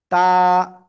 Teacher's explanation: দুই দাঁতের গোড়ায় লাগাবেন, লাগিয়ে একালিফ টেনে উচ্চারণ করতে হবে।